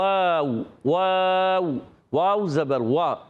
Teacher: واو کی ادائیگی ہوتی ہے ہونٹوں کی گولائی سے